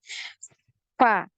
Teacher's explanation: terasa sekali ada aliran nafas dan juga aliran suaranya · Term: huruf Fa